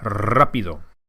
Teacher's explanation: The R in rapido, as you can hear, is rolled or trilled. This is because it's the first letter of the word.